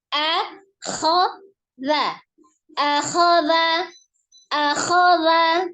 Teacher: Hamzahnya atau alifnya dari tenggorokan bagian bawah, kemudian kha-nya dari tenggorokan atas, pertahankan bentuk mulutnya.